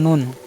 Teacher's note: জিহ্বার আগা ও সামনের উপরে মাড়ি সংলগ্ন তালুর সাথে লাগিয়ে উচ্চারণ করতে হবে। মানে দেখেন এই দেখেন মাড়ির তালু, মানে মাড়ির তালুর সাথে লাগে উচ্চারণ হবে।